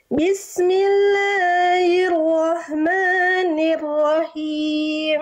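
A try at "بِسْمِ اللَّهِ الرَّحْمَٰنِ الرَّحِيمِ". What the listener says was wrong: Oke, him. Him, hak kecilnya sempurnakan. Him. Hak kecil dilafalkan dari tengah tenggorokan Bunda. Bismillahirrahmanirrahim. Nafasnya berbisik, lembut.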